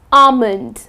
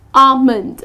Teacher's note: Okay, so the L is silent.